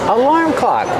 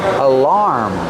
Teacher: Put the stress on the second syllable, making the R sound like bar and car.